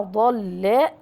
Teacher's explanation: هذه هي حروف الاستعلاء مع ضل. أما اللام من الحروف البينية المرققة